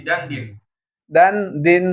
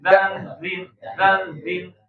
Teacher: Jadi gesekannya harus ada. Gesekan antara ujung lidah dengan ujung gigi seri itu harus ada. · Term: zal